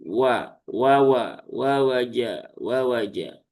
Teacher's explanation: Huruf wau dia keluar dari memonyongkan bibir ya. Jadi wa bukan wa tapi wa wa ya seperti itu ya.